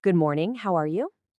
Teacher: Listen again and notice that slight rising tone at the end